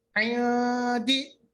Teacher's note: نون میں آواز بالکل ناک میں نہیں لے جانا, منہ میں ہی رکھنا ہے, تھوڑا سا آواز کو منہ میں رکھنا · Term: اخفا